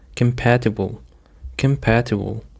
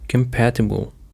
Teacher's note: The stress on the second syllable, compatible.